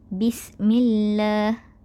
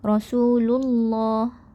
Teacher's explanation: Jadi tidak tepatlah kerana lafaz Allah di sini sebelumnya adalah huruf berbaris kasrah. Jadi huruf berbaris kasrah sebelum lafaz Allah perlulah dibaca dengan nipis ataupun tarqiq.